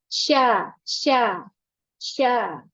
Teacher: Tengah lidahnya Tengah Lidah Tidak menempel dengan sempurna masih ada jarak dengan langit-langit · Karena huruf shin itu makrajnya adalah lisan, dia tidak memonyongkan bibir. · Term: huruf syin